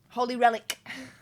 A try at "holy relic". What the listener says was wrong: You say Holly as in holy. Why are you saying Holly? You said Holly Relic.